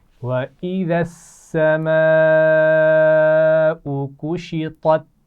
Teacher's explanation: الف مدہ بھی ہے لیکن وہاں بڑی مد بھی ہے تو اس کو ہم کھینچ کر پڑھیں گے. كُشِطَتْ طا اور تا موٹا پڑھا جاتا ہے، تا باریک پڑھا جاتا ہے، دونوں اکٹھے آ گئے ہیں تو اس کا خیال رکھتے ہوئے پڑھنا ہے.